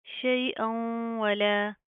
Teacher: تو یہاں پر کیا ہو رہا ہے، ادغام مال گنا، ہم گنا کریں گے، نا کے اندر ساؤنڈ پیدا کریں گے